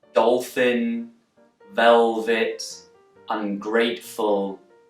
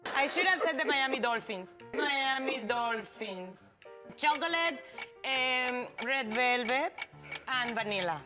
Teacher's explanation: When I pronounce the words dolphin, velvet, ungrateful, I use dark L's. But now listen to Sofia Vergara, and she uses light L's.